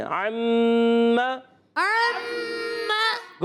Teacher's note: عین کی حرکت کو کھینچنا نہیں، میم پر بھی زبر ہے، اس کی حرکت کو بھی کھینچیں گے نہیں، دونوں کو برابر رکھیں گے۔